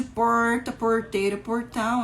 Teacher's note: Sempre que aparece a letra R, é o som de porta, porteira, portão, é o R retroflexo.